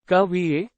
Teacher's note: the voice rises towards the end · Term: intonation